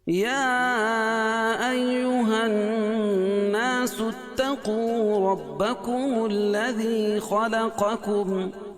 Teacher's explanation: یا الگ کلمہ ہے، ایہا الگ کلمہ ہے، تو یہ مد منفصل ہوگا، یعنی 2 الف تک اس کو کھینچ کے پڑھیں گے۔ الناس نون مشدد ہے، اس میں غنہ ہوگا، اور الف سے پہلے نون کے اوپر زبر ہے تو الف مدہ۔